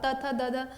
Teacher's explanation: जीभ सीधे दांतों से टकरा रही है वो दंत हो गए